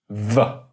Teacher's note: a labiodental means you're combining a lip and the teeth, like that, v, and then letting the sound go through.